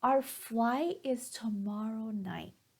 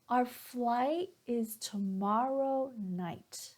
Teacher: my pitch went up down up down up down and this is what intonation is all about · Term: rising and falling intonation